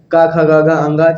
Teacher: इसका उच्चारण कंठ से होता है